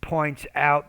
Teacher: you want to pronounce that p with a little bit more air